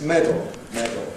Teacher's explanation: schwa + l, making syllabic [ l̩ ] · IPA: [ ˈmedl̩ ]